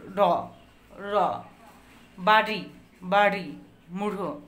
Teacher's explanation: এই ব্যঞ্জন ধ্বনিগুলো উচ্চারণের সময় জিভের সামনের অংশ দন্তমূলের উপরে মূর্ধায় টোকা দেওয়ার মতো লাগে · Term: তাড়িত ব্যঞ্জন